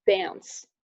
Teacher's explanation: before nasals and voiceless fricatives, we use the cat vowel instead of a father A, so we end up with dance.